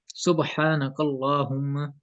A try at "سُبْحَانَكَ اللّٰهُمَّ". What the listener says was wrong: قل یہ کاف پر ہو رہا ہے، اس کو سمپل منہ سے ادا کریں. سبحانک اللہم.